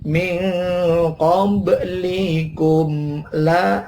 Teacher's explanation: mim matinya jangan didengungkan tetapi dibunyikan secara jelas mimnya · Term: izhar syafawi